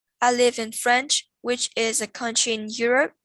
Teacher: There are two tone units in here. I live in France is a tone unit, and which is a country in Europe is a tone unit.